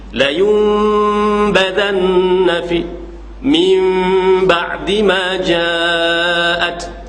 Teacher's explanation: walaupun nun, seolah-olah nun tu dah ditukar kepada mim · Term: iqlab